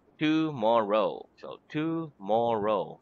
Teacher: the accent in the word tomorrow is on the second syllable